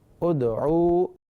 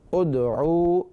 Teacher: دال یہاں آ رہا ہے، اور جب یہ ساکن ہو تو جنبش پیدا ہوگی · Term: حروف قلقلہ